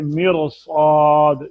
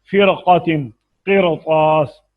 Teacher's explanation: तो जब रा साकिन के बाद उसी लफ्ज में हरफ इस्तिलाह हो, जैसे मिरसाद, तो रा पुर पढ़ेंगे